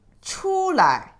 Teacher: But if you say 出来, it's a light touch tone